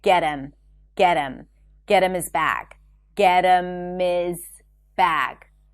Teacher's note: the H in pronouns like her, him, or hers and his is dropped when it's unstressed · So 'him' and 'his' turn into 'im' and 'iz'.